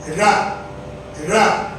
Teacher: நல்லா மடிச்சு உரசாம சொன்னீங்கன்னா ழ மடிச்சிட்டு ரெண்டு பக்கமும் உரசக்கூடாது